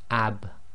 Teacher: there's a slight echo where the dry portions of your lips have to separate in order to complete the sound